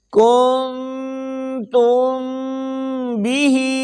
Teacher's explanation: میم ساکن کے بعد حرف با آ جائے تو میم ساکن میں اخفاء ہوگا، یعنی غنہ کر کے پڑھیں گے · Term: اخفاء شفوی